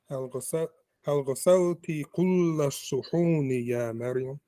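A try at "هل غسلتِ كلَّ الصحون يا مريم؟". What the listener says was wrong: So when you make it shadeed, don't make it long. Kull, just make it shadeed and go. Kull. Make it shadeed, make it hard and go. But don't hold it.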